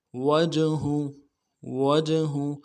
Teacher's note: واو کو جیم کے ساتھ ملانا ہے، جیم جب ساکن ہو تو قلقلہ ہوگا